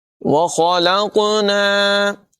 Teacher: قاف چونکہ حروف قلقلہ میں سے ہے ساکن ہے، اس میں قلقلہ بھی خوب واضح کریں گے، آواز ٹکراتی ہوئی محسوس ہوگی